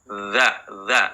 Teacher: huruf dza ya sebelum diucapkan ada suara Z dulu zza nah hati-hati tapi bukan EZ dza dza suaranya yang mengalir